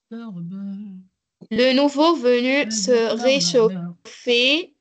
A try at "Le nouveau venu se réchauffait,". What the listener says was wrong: Très bien.